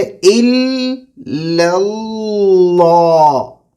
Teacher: پہلے دو لام باریک، آخری دو لام موٹے. جی تو اس میں ہم باریک سے موٹے کی طرف جائیں گے.